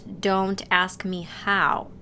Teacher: if you link the words me and how they might sound like meow in the Australian accent